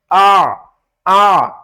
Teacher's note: عین حروف حلقی میں سے ہے، ہمارے حلق کا جو درمیان والا حصہ ہے وہاں سے آواز آنی چاہیے